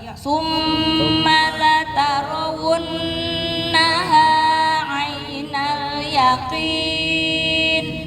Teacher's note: Perhatikan mim tasydid di summa sama nun tasydid setelah wa. Wunna itu harus sama ya. Summa wunna. Ayo latihan tahan di situ. Sama-sama nahannya tuh sama-sama dua ketukan ya. Jangan sampai summa udah bener la tarawunnaha nggak ditahan di situnya.